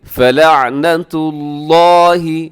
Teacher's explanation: यहाँ लफ्ज़ अल्लाह मोटा पढ़िएगा, बारीक न कीजिएगा।